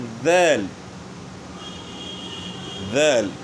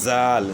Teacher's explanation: زبان کی نوک سامنے والے اوپر کے دانتوں کے کنارے کے ساتھ لگے گی. تو ذال میں بھی جو ہے نا اسی طرح جو ہے نا جس طرح تھا میں زبان کی نوک اوپر کے دانتوں کے کنارے کے ساتھ لگ رہی تھی، تو ذال بھی اس طرح زبان کی نوک سامنے والے اوپر کے 2 دانتوں کے کنارے کے ساتھ لگے گی.